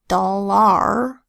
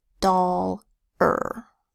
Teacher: Oh doll and then instead of saying are like doll are the a softens to an unstressed vowel sound uh it becomes a doll or is it a doll are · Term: schwa